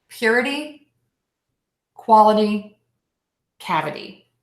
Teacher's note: Make sure that that middle syllable in these 3-syllable words is that really short sound, the schwa syllable.